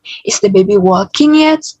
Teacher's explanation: Aku menambahkan walking agak lebih sedikit tinggi dari is the baby.